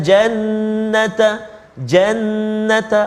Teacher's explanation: ada sabdu dekat atas nun tu, kena beri hak dia, iaitu wajibul gunnah, 2 harakat. Jannata, jannata, jangan cepat kat situ, kena beri 2 harakat.